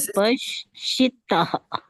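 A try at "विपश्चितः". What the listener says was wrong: Not she. It is cha for chameli. Vipaṣcitaḥ. Chitaḥ.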